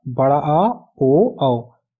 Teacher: संवृत मतलब मुंह कम खुलता है, छोटी ई, बड़ी ई, छोटा ऊ, बड़ा ऊ। और विवृत स्वर का मतलब इन स्वर को बोलने में मुंह हमारा ज्यादा खुलता है।